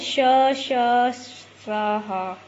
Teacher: जिनके उच्चारण में वायु घर्षण करके आती हो, बाहर निकलती हो, घर्षण करके बाहर निकलती हो, उन्हें 4 होते हैं कुल, ठीक है। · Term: ऊष्म व्यंजन